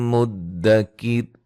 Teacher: را کو باریک پڑھیں گے وقفاً وصلاً، ٹھیک ہے۔ ملانے کی صورت میں نون تنوین کا ادغام مع الغنہ ہوگا۔